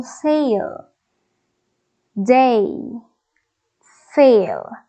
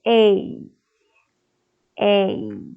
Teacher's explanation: from the middle position of the tongue it is becoming more tense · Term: the a sound